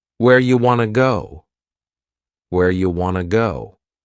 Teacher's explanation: and want to becomes Wana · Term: reduction